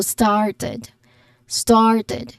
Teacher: the vowel in started the a sound there it is a longer open sound like when you say ah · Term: long a sound